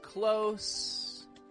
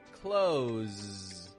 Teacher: between the words close, getting the S sound, close, buzzing, vibrating with that Z sound